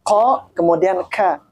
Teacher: Kaf itu letaknya ada di mana? Di lidah paling belakang.